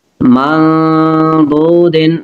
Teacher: نون ساکن کے بعد ضاد حروف اخفا ہے، غنہ کریں گے